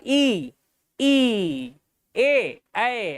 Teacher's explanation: तो जीभ के सामने से आप ई ए ऐ ऐसा बोलते हो